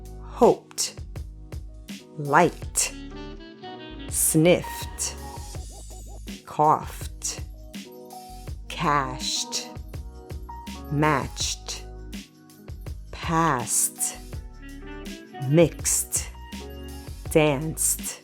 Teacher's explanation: verb ends in a voiceless sound, we pronounce ed as t